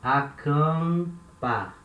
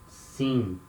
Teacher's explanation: Acampar, here letter M at the end of a syllable, acampar. It has the nasal sound, and this nasal sound, it starts in the vowel that comes before. So we start the nasal sound here in the letter A, acampar, and we finish the nasal sound in letter M, acampar.